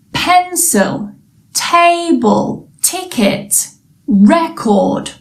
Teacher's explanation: they are two syllable nouns and where does the stress go on the first syllable